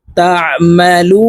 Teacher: এই লামকে তিন আলিফ টেনে নুনকে সাকিন করে ফেলবো